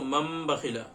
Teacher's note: کیونکہ نون ساکن کے بعد یا تنوین کے بعد حروف تنوین یا نون ساکن کے بعد اگر با آ جائے تو یہاں پہ نون ساکن کے بعد با ہے، اس لیے ہم کیا کر رہے ہیں؟ نون کو نہیں پڑھ کے میم کو پڑھ رہے ہیں · تنوین یا نون ساکن کے بعد اگر با آئے تو نون کو میم سے بدل کر پڑھتے ہیں۔ ہجے مثلا من بخلا کے اس طرح ہوں گے، لکھا ہوتا ہے میم نون زبر من با زبر با، من با خاص زیر خی، من بخیلا ہم زبر من بخیلا، لیکن پڑھیں گے اس کو مم بخیلا، میم زبر مم، نون کو میم سے بدل دیں گے۔ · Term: اقلاب